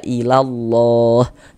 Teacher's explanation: huruf lam jalalahnya dibaca tabkhim dibaca tebal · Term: tafkhim